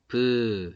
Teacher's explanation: 특별하게 내가 더 많이 내야지 이런 게 없어요. 긴장하지 않고 그냥, 평소처럼 발음하면 그게 예삿소리예요. 그리고 얘네들은 성대도 긴장 안 해요.